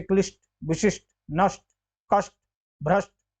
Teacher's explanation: हम स का उच्चारण होता है तो वह यही मूर्धन्य वाली स का होता है